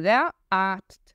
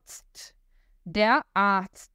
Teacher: O Z tem som de TS, depois eu tenho um T no final